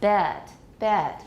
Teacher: it has an off-glide of a schwa all of the short vowels do in American English but the shorter short vowels have less of a Glide so